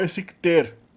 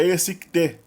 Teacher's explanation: Aí é curioso que o kazakh também muda o L do plural para T, quando a palavra termina com uma consoante surda, oclusiva. Então também tem uma harmonia consonantal, que opera em várias línguas túrquicas.